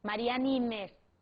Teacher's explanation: se eu falo Mariana Ines eu vou acabar fundindo esses dois fonemas